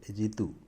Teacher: ഇ ഉത്രയും അക്ഷരങ്ങളിൽ വ്യത്യാസമൊന്നുമില്ല പക്ഷേ ഇവിടെ വരുമ്പോൾ ഈ അക്ഷരം നമ്മുടെ മലയാളത്തിൽ ഋ എന്ന് പറയുന്ന അക്ഷരമാണ് പക്ഷേ ഇതിന്റെ ഉച്ചാരണം ഹിന്ദിയിൽ വരുമ്പോൾ ചെറിയൊരു വ്യത്യാസമുണ്ട് അത് രി എന്നാകും